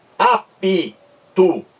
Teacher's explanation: Nós temos a impressão de que existe um I entre o P e o T.